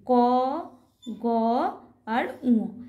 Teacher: ফুসফুস থেকে বায়ুর কম নির্গত হয় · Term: অল্পপ্রাণ বর্ণ